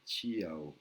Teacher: Tiao, Tiao. Alors, on a bien un T avec un H inspiré, TH, les deux I, qui sont une voyelle longue